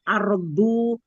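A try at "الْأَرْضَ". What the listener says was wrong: Jangan ardu. Jangan ardu karena ardu itu maf'ul bih menjadi objek.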